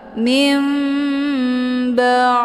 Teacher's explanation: Mana iqlab itu membalikkan daripada bunyi nun sukun menjadi kepada bunyi mim. Maka yang kita baca di sini adalah mim sukun bertemu ba.